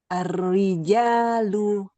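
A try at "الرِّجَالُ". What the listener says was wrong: Masih agak banyak getar. Jadi tidak R. R. R. Dikit aja. Ro. Ro. Tidak ro. Nah, jadi huruf ro itu getarnya sedikit aja. R.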